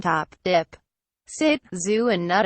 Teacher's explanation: sounds formed with the front part of the tongue on the alveolar ridge